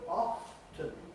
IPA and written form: ˈɒftən (often)